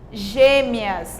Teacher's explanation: Parece que o E sai mais fechado. Quando você emite o E, o som do E, quando você fala, você emite mais fechadinho